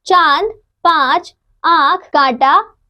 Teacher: इसका उच्चारण नाक और गले दोनों से होता है। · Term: अनुनासिक